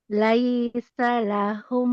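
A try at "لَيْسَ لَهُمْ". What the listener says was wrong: Aja ditekan, Bu. Jangan. Laisa, tapi. Laisa. Lemahkan. Laisa lahum. Laisa lahum.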